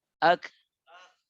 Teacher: জবরকে মুখ খুলে পড়বো আর কাফের উপর একটা বাতাস চালু করবো মাখরাজে।